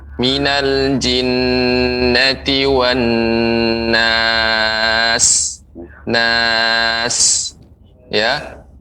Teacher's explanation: Sinnya lebih diperbanyak, Pak, desisnya ya.